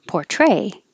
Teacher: the verb has stress on the second syllable